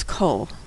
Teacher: The word means all, and it's an extremely common word in the Bible and in prayer, which is particularly inconvenient because it uses a different pronunciation of the vowel komets. Now usually a komets makes an ah sound, but in the word kol, it makes an O sound.